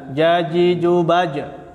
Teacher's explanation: Tengah-tengah lidah dengan langit-langit. Perhatikan makhrajnya huruf jim, tengah-tengah lidah dan langit-langit. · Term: makhraj huruf jim